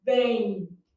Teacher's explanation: Na palavra bem, eu tenho um E funcionando como vogal e um I funcionando como semivogal, mesmo que ele esteja representado pela letra M. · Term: ditongo fonético